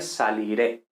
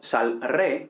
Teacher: Como sabemos, no existe saliré, ¿no? Porque se pierde la I, precisamente ocurre una síncopa de la I